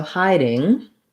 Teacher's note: you're going to see a d in the dictionary but really you're going to be using a flap